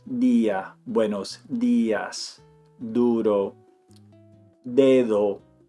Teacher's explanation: When it's at the beginning of the word, duro, they put their tongue on the back of their teeth. It goes on the back of the teeth, not on the palate. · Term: D sound in Spanish